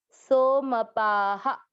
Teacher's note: पा में आ की मात्रा है, विसर्ग को पढ़ेंगे हा